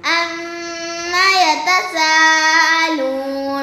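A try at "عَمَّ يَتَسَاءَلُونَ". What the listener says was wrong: آپ نے مت تھوڑی کی ہے، پھر پڑھیں.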